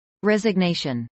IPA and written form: rˌɛzəɡnˈeɪʃən (resignation)